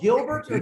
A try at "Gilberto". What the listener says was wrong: You pronounce it well. Just roll your R, and we're cool with Gilberto.